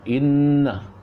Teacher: inna, wajib gunnah, jadi kena dengung tu baca, kena dengungkan. Jadi kita tak boleh baca inna tak ada dengung.